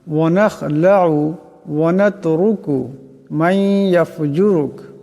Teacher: মাই, এখানে নুন সাকিনের পর ইয়া আসছে, ঈদগাম হয়ে যাবে, ঈদগামের একালি পরিমাণ গুন্না হবে।